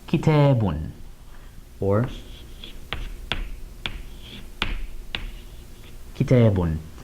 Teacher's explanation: They both represent tanween, that addition of a noon sound. So we get un at the end.